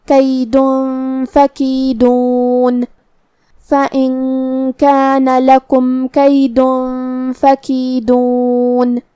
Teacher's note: ہمیں یہ تنوین کو چھپاتے ہوئے اور غنہ کے ساتھ یہ حکم کو ادا کرنا ہے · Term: اخفاء